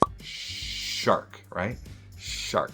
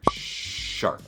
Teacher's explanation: So let's try to get that sh down. Often we're rounding our lips. Now, we don't have to, but it gives a nice sh kind of slushy swishy quality that we're looking for. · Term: sh sound